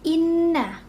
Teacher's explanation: Kenapa gunnah? Karena di sini huruf nunnya itu bertasydid, sehingga dibacanya itu dengung dengan ditahan 2 harokat.